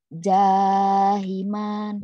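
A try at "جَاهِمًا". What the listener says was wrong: Nggak ada yang panjang. Hinya baru panjang, ada yang mati. Salah. Yang panjang mana yo? Yang panjang yang mana yo? Iya, jim dulu betul bacanya. Cuma salah panjang pendeknya doang.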